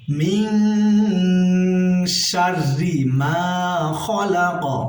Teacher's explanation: কফ এখানে যেহেতু আমরা ওয়াকফ করছি তাই কফের উপরে জজম হবে, আমরা এখানে কলকলা পড়ব, ধাক্কা দিয়ে পড়ব